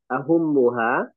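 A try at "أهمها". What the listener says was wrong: Ahammu, bukan ahum tapi ahammu.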